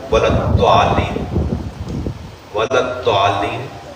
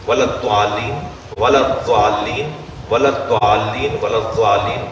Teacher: زبان آگے لگ رہی ہے، آگے والے دانتوں میں لگ رہی ہے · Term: دال